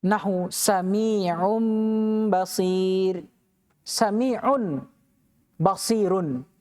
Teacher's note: Iqlab qalb. Wajib diganti bunyi nunnya menjadi mim.